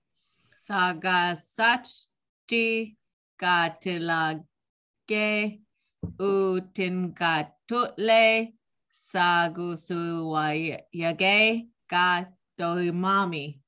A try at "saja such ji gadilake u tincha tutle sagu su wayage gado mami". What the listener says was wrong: Super close. Just two spots. So you said saga such di and denga tutle instead of saja.